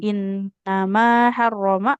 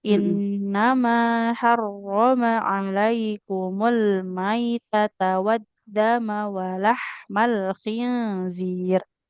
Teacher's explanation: mimnya enggak boleh panjang karena enggak ada enggak ada alifnya